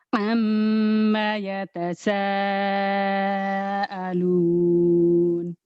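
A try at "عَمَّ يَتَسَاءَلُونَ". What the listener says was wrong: Kurang tinggi. Amma yatasaalun. Tinggiin dikit. Gitu.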